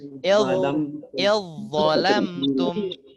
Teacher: jadi cara bacanya zalnya macam hilang, langsung masuk dha sabdu ya.